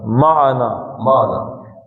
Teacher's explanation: جن لوگوں کی تھوڑی سی تجوید کمزور ہوتی ہے معا کر دیتے ہیں اس کو، معنا معنا ایک ایک حرکت ہے، معنا معنا پڑھیں گے تو غلط ہو جائے گی، معنا تھوڑا سا بھی عین کو لمبا کیا تو دو حرکتیں ہو جائے گی، معنا معنا معنا معنا معا۔